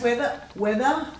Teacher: there's no air after the w